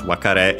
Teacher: By the way, accented on the last syllable